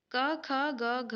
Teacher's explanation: क, ख, ग, घ, व ये कंठ्य में आते हैं, इसीलिए घ का उच्चारण स्थान कंठ्य है